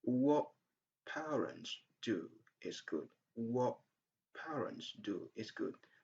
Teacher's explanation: So the sound t at the end of what is not pronounced.